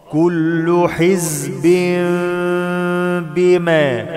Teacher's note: إقلاب مع الغنة، تنوين وبعده باء